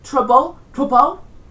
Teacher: The L vocalisation, the L at the end of words often becomes a vowel sound.